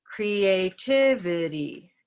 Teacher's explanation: we have a lot of little colorful syllables in our word and one syllable that is reduced to schwa